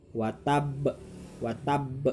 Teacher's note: Watabba diwakofkan menjadi watab ya, jadi disukunkan. Nah, ketika kalian mengucap watab, maka ba-nya harus memantul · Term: qalqalah